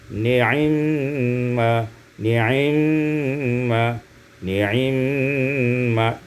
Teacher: diikhtilaskan kasratul ain, iaitu kasrah itu dibaca dengan 2/3, itu ikhtilas, maka menjadi ni'imma, ni'imma, ni'imma, dibaca dengan cepat.